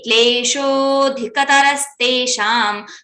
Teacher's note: I have not make it longer. So, sho itself is a dirgha matra and it should be having two kals, two kshanas, 2 seconds.